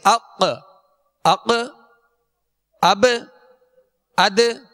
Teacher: رکھیے گا کہ ان 5 حروف میں صرف قلقلہ ہوگا، یعنی آواز مخرج میں جنبش کرے گی جس سے آواز لوٹتی ہوئی آئے گی